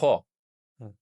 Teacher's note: خو ہے، یہ منہ کے یعنی حلق کے اوپر والے حصے سے ادا ہوا